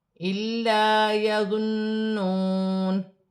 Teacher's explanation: الف مدہ بن رہی ہے، یا مشدد ہے، آمانیہ، جمع کے ساتھ ادا کیا جائے گا، نون ساکن میں غنہ نہیں ہوگا کیونکہ ہا حروف حلقی میں سے ہے، میم ساکن میں بھی غنہ نہیں کیا جائے گا، لام مشدد ہے، جمع کے ساتھ ادا کیا جائے گا، نون مشدد میں غنہ بھی ہوگا اور واو مدہ بن رہی ہے، ایک الف کی مقدار کھینچ کر پڑھا جائے گا